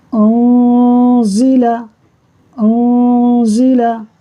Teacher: نون ساکن ہے، نون ساکن کے بعد زا حروف اخفا میں سے اخفا ہوگا، یعنی غنہ کریں گے. نون میں نون نہیں پڑھیں گے، ناک میں آواز کو لے جا کر ایک الف کے برابر رکھ کر پڑھیں گے. ہم پڑھیں گے انزلا، انزلا.